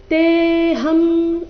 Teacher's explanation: ಅನುಸ್ವಾರದ ಉಚ್ಚಾರಣೆ ಮ ರೀತಿ